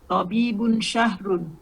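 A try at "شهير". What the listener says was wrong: Syahirun. Bukan syahrun. Kalau syahrun bulan. Syahirun terkenal.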